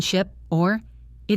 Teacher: The short I in ship or it is a relaxed sound. Your face does not move much.